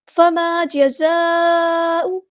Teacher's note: فما جزاء زا کو سختی سے ادا کریں گے، یہاں پہ مد دکھ رہی ہے، کریکٹڈ مد ہے، مد متصل ہے، 4 یا 5 کاؤنٹ ہم نے اس کو لمبا کرنا ہے